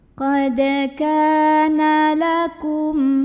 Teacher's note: Maka cara membunyikannya adalah huruf kaf yang fathah kita panjangkan 2 harokat saja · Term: mad tabi'i